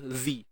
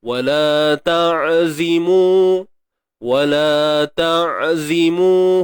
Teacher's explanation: Huruf zai ni tak perlu kita keluarkan hujung lidah, biasa aja, z.